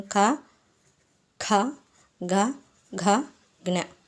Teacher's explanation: ఈ క వర్గం మొత్తం కంఠ్యాలు అన్నమాట